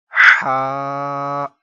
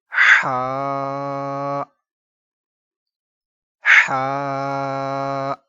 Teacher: یہ حلق کے درمیان والے حصے سے ادا ہوتا ہے،